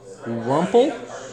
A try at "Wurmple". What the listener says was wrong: Wurmple. Wurmple. You said Rumple.